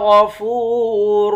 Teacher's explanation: غین کو موٹا پڑھیں گے، فا کو واو کے ساتھ ملا کر واو کو ایک الف کے مقدار کھینچ کر پڑھیں گے، واو حرف مدہ ہے۔